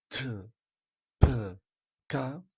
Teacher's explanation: La T, P, K escrites en pinyin sonen aspirades, o sigui, T, P, K, a diferència del T, P, K, que serien la D, B i G.